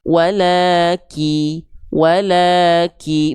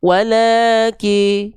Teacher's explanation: Vokal I jelas jangan miring ke vokal e. Walaki walaki bukan wala ki.